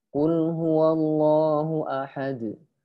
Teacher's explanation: lamnya tidak monyong, di mana mungkin sebagian dari kita ngucapin lamnya itu monyong karena dampak dari huruf qaf yang doma. Qul, tidak qul, qul, mana lam itu tipis.